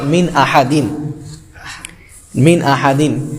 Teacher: یعنی ظاہر کر کے پڑھنا، یعنی ناک سے نہیں بولا جائے گا، گنہ نہیں ہوگا یا اخفا نہیں ہوگا